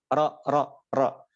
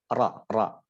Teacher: kalau huruf ro sekalipun suaranya O, nah dia pangkal lidahnya nggak naik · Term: istifal